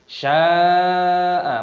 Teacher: mad wajib mutasil, panjangkan 6 ketukan.